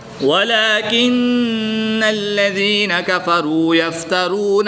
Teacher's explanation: یہاں پر نون مشدد میں بھی غنہ کر کے پڑھیں گے اور نون مشدد میں غنہ آنی کر کے پڑھیں گے